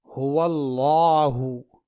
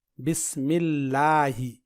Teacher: یہاں دیکھیے لفظ اللہ آ گیا اور اس سے پہلے زبر یعنی فتحہ ہے. تو لفظ اللہ سے پہلے اگر زبر ہو تو لفظ اللہ کے لام کو پر یعنی موٹا پڑھیں گے